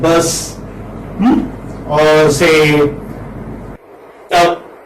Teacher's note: So this is central unrounded vowel just above open.